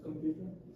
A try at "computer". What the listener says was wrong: Computer. Computer. You're just pronouncing it as very ordinary without any stress, without any emphasis.